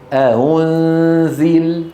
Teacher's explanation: إن كانت مضمومة ننطقها بين الهمزة المحققة والواو مثل أنزل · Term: تسهيل الهمزة